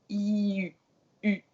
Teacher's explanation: Pour le U, ce que vous pouvez faire, si vous êtes anglophone en tout cas, et que vous savez prononcer les deux I, comme dans sheep, like heel, vous commencez avec le son I, et vous allez bouger vos lèvres vers l'avant. Donc ça va faire la I-U, U.